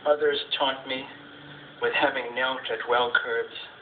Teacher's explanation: frost's poem which begins each line is begins with a trochaic so the stress is on the first syllable so you're already leaning into the line